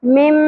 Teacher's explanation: اقلاب ہوگا جس میں ہم غنہ بھی کرتے ہیں اور آواز کو میم میں بدل کر پڑھتے ہیں